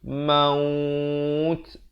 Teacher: Sekurang-kurangnya 2 harakat dan diberikan angin maut di ujung itu. Jangan baca maut tak ada angin, itu tak sempurna.